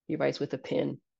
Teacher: pin and pen are pronounced the same, both as pin. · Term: pin-pen merger